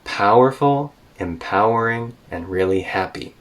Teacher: she is listing out three things one two three rise rise fall this is list intonation · Rise, rise, fall. This is list intonation, and every native speaker uses this all the time.